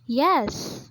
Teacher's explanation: the yes with longer duration it provides an extreme emotion